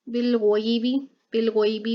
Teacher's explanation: बिलगोयबी में भी यहाँ पर यालीन हो रहा है, इसलिए लंबा नहीं करेंगे